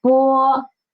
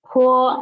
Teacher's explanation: The only difference is the air. One is soft and one is stronger. For unaspirated the air is the air is like it is much soft much more soft and for the aspirated the air is stronger.